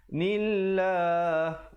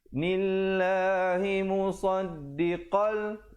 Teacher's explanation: lafzul jalalah dibaca nipis di situ kerana datang sebelumnya baris kasrah dan ianya dibacakan dengan dua harakat.